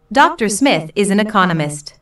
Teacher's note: notice the stress on Economist this content word has new information so it is emphasized